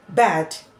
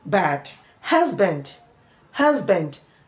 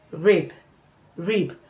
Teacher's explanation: your upper lips and your lower lips will have contacts during production